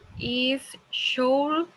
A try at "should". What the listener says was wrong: Don't pronounce the L. Don't pronounce the L. It's only should, like this.